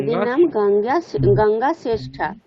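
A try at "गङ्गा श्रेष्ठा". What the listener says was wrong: শ্রেষ্ঠা, ঠিক।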